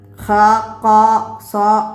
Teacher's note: നാവിൻറെ മുരട് അണ്ണാക്കിലേക്ക് ഉയരുന്നത് കൊണ്ടാണ് തർഫീം ഉണ്ടാകുന്നത് ഉണ്ടാകുന്നതും നാവിൻറെ മുരട് അണ്ണാക്കിൽ നിന്ന് താഴുന്നത് കൊണ്ടാണ് തർക്കീക്ക് ഉണ്ടാകുന്നതും അത് രണ്ടും